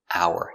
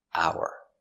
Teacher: the H is silent and we say hour no h sound